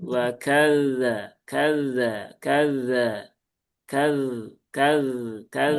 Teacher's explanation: Kalau zal dia nggak ada, nggak punya sifat desis, hanya mengalir saja. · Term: rokhawah